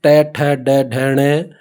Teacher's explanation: जीभ है वो मूर्धा के टच करेगी, मूर्धा के लगेगी। तो इनको कहते हैं मूर्धन्य।